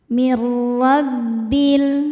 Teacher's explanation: Ro dibaca tafkhim karena harokatnya fathah, maka dibaca tebal.